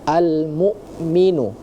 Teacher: al-mu'min yang harusnya menggunakan huruf hamzah, tadi terdengar ada huruf ain ya